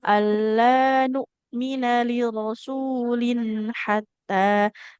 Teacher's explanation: Kan di dalam tanwin ada bunyi nun sukun ya. Nah, huruf nun kan kalau sukun harus dialirkan dulu suaranya.